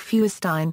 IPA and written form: ˈfɔɪərstiːn (Feuerstein)